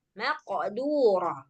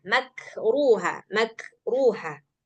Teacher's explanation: kalau yang kaf enggak perlu ada qalqalah · Yang pertama qof dia harus ada suara qalqalah.